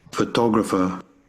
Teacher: Here we have the stress in the second syllable. It's more louder and stronger than the other ones.